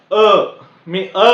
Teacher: त्याच्यामध्ये मी माझी जीभ टाळ्याला लावली नाही किंवा कुठेच लावलेली नाही अगदी मोकळा असा कंठातून तो आवाज आलेला आहे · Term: कंठ वर्ण